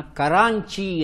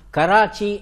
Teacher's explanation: ಒಂದು ಪ್ರದೇಶವನ್ನ ಕರಾಂಚಿ ಅಂತ ಕರೀತಾರೆ ಕರಾಂಚಿ ಅನುಸ್ವಾರ ಬರುತ್ತೆ ಕರಾಂಚಿ ಅಂತ ಆದರೆ ಬ್ರಿಟಿಷರಿಗೆ ಈ ಅನುಸ್ವಾರವನ್ನು ಉಚ್ಚಾರ ಮಾಡೋಕೆ ಬರೋದಿಲ್ಲ ಹಾಗಾಗಿ ಕರಾಂಚಿ ಅನ್ನೋ ಮೂಲ ಹೆಸರನ್ನ ಕರಾಚಿ ಅಂತ ಕರೆಯೋಕೆ ಶುರು ಮಾಡ್ತಾರೆ